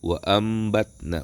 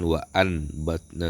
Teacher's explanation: Kemudian yang kelima ada iqlab. Iqlab ini mengubah yang tadinya nun, ketika bertemu huruf iqlab dirubah menjadi mim